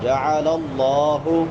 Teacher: پہلے زبر ہے تو الف مدہ بنتا ہے جعل اللہ جع عین ہے کہاں سے ادا ہوگی وسط حلق سے حلق کے درمیان سے